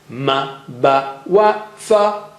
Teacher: So we have learned Ma, Ba, Wa, Fa are from the lips